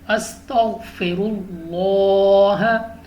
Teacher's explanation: ہم نے لام آف اللہ کو پر پڑھنا ہے۔ استغفر اللہ، را پر زبر ہے تو ہمیں را کو پر پڑھنا ہے۔